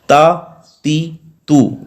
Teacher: زبان کی نوک ثنایا علیہ کی جڑوں سے جب لگے گی تو وہاں سے تا ادا ہوگا، اور یہ حرف باریک ہے